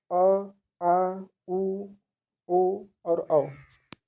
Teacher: आप इसे बोल के देखेंगे तो आपके पीछे जो कंठ का साइड है अंदर, उस वो वाला पार्ट आपका काम करेगा, तो इसे पश्च स्वर के श्रेणी में रखा गया।